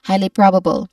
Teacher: highly probable with a rising tone on the first and third syllables